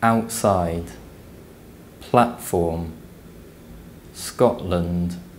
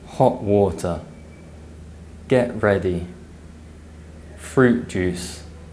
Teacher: T glottalization before consonants is so common that it's effectively standard